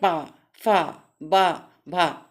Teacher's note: पा, अवरोध हो रहा है, अवरोध माने रुकना, श्वास रुकती है, पा, फा, बा, भा, जिन व्यंजनों के उच्चारण में दोनों ओठों द्वारा श्वास का अवरोध हो, ओष्ठ व्यंजन कहलाते हैं।